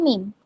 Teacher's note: দুই ঠোঁটের শুকনা জায়গা থেকে মিম উচ্চারিত হয়